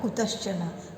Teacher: तो संधि विच्छेद में जैसे कुतश्चन, तो इसका संधि विच्छेद आपको करना है, कुतः प्लस चन, है ना। विसर्ग के बाद अगर च वर्ग होता है तो विसर्ग तालव्य स में बदल जाता है, तो इसीलिए यहाँ पे क्या हो गया, कुतश्चन, यानी विसर्ग तालव्य स में लिखा हुआ है, तो हम जब इसका संधि करेंगे तो कुतः लिखेंगे और चना कर देंगे।